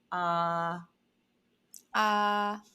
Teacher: that's pronounced by simply opening up your mouth and making a sound from the back of your throat